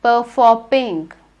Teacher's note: when you say the sound some air comes out of your mouth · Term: plosive